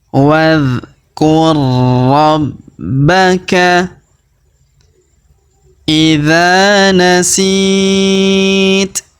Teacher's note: Huruf ba kita tahan dan kita tekan karena terdapat tanda tasdid di sini